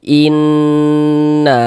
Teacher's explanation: di bagian inn-nya itu suaranya itu kita tahan ya, kita panjangkan sejenak. Innahum innahum nanya pendek.